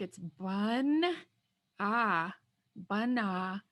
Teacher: So this first A doesn't sound the same. It sounds more like a U.